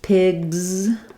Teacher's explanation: We have a Z sound there because the G in pig is voiced.